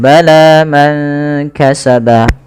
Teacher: Pada ketika kita melafalkan bala man kasaba, panjangkan huruf la-nya sepanjang 2 harakat karena la di sini ada alif kecil yang datang setelahnya dan ia berada di atas huruf ya. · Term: mad tabi'i